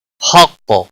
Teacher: قاف حروف مستعلیہ میں سے پر پڑا جائے گا وقف کی صورت میں. اس پر کلکلہ بھی ہوگا.